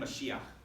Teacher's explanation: you have that guttural chet at the end